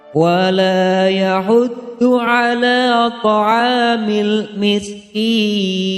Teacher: mad tabi'i, karena lam berharokat fathah bertemu dengan alif. Cara membacanya adalah dibaca panjang 2 harokat.